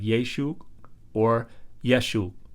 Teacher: it was probably pronounced something like yesu or yeshu which has a glottal stop at the end